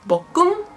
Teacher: the end sound of the first syllable is being carried on and kind of merged together with a beginning sound of the second syllable creating a fluid word